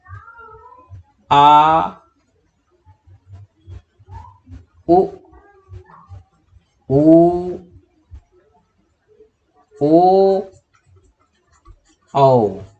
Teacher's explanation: पश्च स्वर में स्वरों का उच्चारण के समय जीभ का पिछला भाग काम करता है।